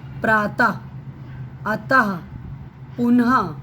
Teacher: तो उच्चारण में हा की ध्वनि प्रतीत होती है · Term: विसर्ग